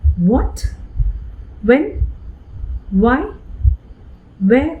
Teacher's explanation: are for a slight moment but for a very short moment for a fraction of a second my lips are in the position of a vowel oh and then it glides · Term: semi vowel, semi-vowel